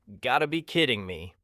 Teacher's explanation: And sometimes people even drop the you've. They just say, gotta be kidding me.